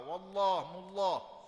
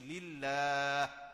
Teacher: Ya, baca kena tebal tu sebab lafzul jalalah. Bila baris sebelum Allah tu bagi atas, bagi depan baca tebal wallah mullah. Tapi baris sebelumnya bagi bawah baca tarkik, baca dengan nipis lillah.